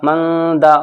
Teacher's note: نون ساکن کے بعد دال آ گیا تو اخفا ہوگا، ناک میں آواز گونجے گی